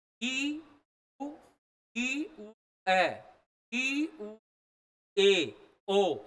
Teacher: ए और ओ बोलोगे तो यह जो है संवृत की तुलना में थोड़ा सा खुल जाएगा